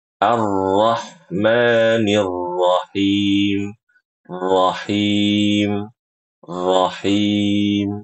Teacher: ketika baca rahim jangan sampai huruf ha-nya kayak bertasydid.